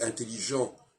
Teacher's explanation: Et dans intelligent, on n'entend pas le T, il y a une absence du T.